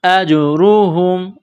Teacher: اجرہم، حمزہ کو جیم کے ساتھ ملانا ہے، جیم ساکن ہے تو یہاں پر قلقلہ کریں گے. اجرہم، را کے اوپر پیش ہے تو موٹا کرنا ہے